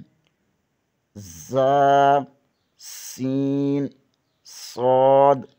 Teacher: ان 3 حروف میں زا، سین، صاد کو ادا کرتے وقت سیٹی کی طرح تیز آواز نکلنی ہے، اس لیے ان حروف کو حروف صفیریہ یعنی سیٹی والے حروف کہتے ہیں۔